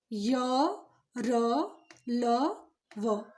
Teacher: इनके उच्चारण में जो हमारी जिह्वा है वो मुख के किसी भी भाग को पूरी तरह स्पर्श नहीं करती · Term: अंतस्थ व्यंजन